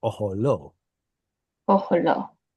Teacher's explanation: Yeah, because the word ohel should have an O sound on it. So when we lose the holam, we're still going to have the O sound, just a shorter one because it's unstressed. Ohel becomes oholo.